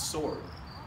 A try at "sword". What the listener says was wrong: No, it's sword. There's no sh in there. There's no sh in sword.